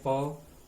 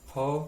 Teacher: अघोष अल्प प्राण में प और अघोष महाप्राण में फ